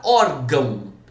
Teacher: A sílaba tônica aqui no caso é o or.